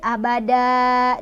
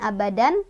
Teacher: Dalnya jadi mad iwad karena ada fathah tanwin yang diwakofkan atau diberhentikan. Jadi tadinya fathah tanwin abadan, kalau berhenti jadi abada, dibacanya panjang 2 harokat.